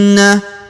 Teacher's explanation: Huruf na ini ditahan dan ditekan lalu didengungkan dua harakat